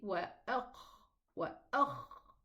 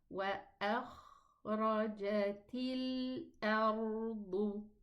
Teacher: The exit of the kha is opened, so let the sound run.